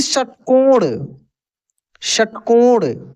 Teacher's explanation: मूर्धन्य स जो होता है उसका उच्चारण मूर्धा से होता है